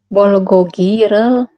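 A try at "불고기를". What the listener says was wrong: Bol apa bul?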